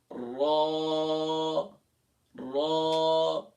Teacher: जबान का किनारा, दांतों की जड़, तालू की जानिब वाले हिस्से से रो अदा होता है।